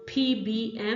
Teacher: we have here bilabial, which is both lips. So we go P, B, M, which is P, B, and M.